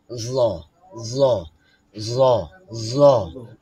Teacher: জিহ্বার আগা উপরের দাঁতের আঘাতে স্পর্শ করবে।